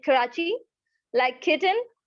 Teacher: जब भी आप बोलेंगे K, like कराची, like kitten, हल्का सा H, पूरा K नहीं बोलना।